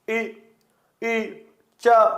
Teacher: इनके उच्चारण में जीवा तालू की ओर जाती है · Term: तालव्य वर्ण